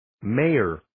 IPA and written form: ˈmeɪər (Mayor)